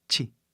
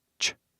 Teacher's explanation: o chi tem um som de i no final, mas no inglês não.